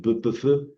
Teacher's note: se pronuncian con los dos labios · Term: labiales